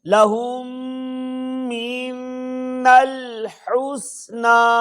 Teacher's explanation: میم ساکن کے بعد دوسری میم آ جائے تو ادغام شفوی ہوگا، یعنی غنہ کریں گے